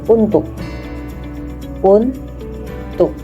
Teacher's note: U pada tuk dibaca lemah karena pada suku tertutup, dan K pada tuk menjadi glottal karena merupakan akhir suku kata